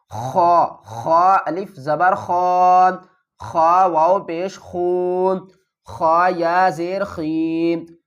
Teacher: خا الف زبر خا، یہ بھی حروف مدہ میں سے ہے، اور یہ بھی حروف مدہ ہے، لیکن یہ خا موٹا ہو رہا ہے، یہ حروف حلقی بھی ہے اور موٹا بھی ہو رہا ہے۔ تو اس کو حلق کے اوپر والے حصے سے ادا کریں گے، اور جب ادا کریں گے تو حلق کے اوپر والے حصے سے آواز بھی آئے گی۔